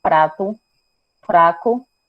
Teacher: Tem um tap, que é quando há uma batida na língua no alvéolo, que fica próximo ao palato duro e o palato mole, que é o famoso céu da boca. Prato, você bate levemente no céu da boca.